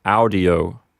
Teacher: the accent recedes back to the first syllable